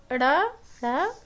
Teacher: इनके उच्चारण में जीभ जो है वो उलट जाती है, इसलिए इन्हें उत्क्षिप्त व्यंजन कहते हैं।